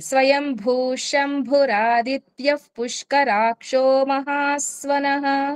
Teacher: రాదిత్యఫ్, ఎఫ్ అని ఎందుకు వచ్చింది? పా ముందు విసర్గ కాబట్టి ఎఫ్ వచ్చింది. మరి ఆ పాని వెడగొట్టేసినప్పుడు ఇక్కడ ఎఫ్ రాదే, కాబట్టి కలిపే చదవాలి.